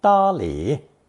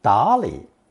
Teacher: Some Chinese pronounce this phrase with first tone 答理, but second tone 答理 is also common.